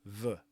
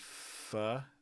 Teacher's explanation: I think another really important thing to look at here is the F and the V that start off the words. Again, V has the voicing bar. V is shorter. And V is a little bit quieter.